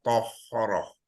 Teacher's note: Ta, tahara. Semua kena naikkan pangkal lidah tu supaya dapat sifat isti'la.